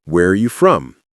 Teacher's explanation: Make your voice fall on from.